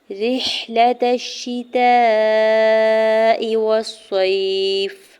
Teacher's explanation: را کی زیر کو حا ساکن کے ساتھ ملاتے ہوئے پڑھنا ہے